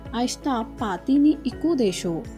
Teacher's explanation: Desho is spoken with the rising intonation.